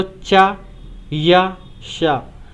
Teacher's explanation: तो चा वर्ग में देखिए, जैसे जीभ जाकर ऐसे तालु पर टकराती है ऊपर की ओर